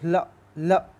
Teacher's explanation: कौन सा व्यंजन पार्श्विक है, ला बोल के देखो, ल ल, तुम्हारी जीभ की दोनों साइडों से हवा निकल जाएगी